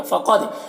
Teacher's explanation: قاف کو پر پڑھیں گے، دال میں قلقلہ ہوگا